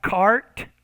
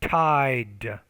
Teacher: you need to make that T with a little bit more air, aspiration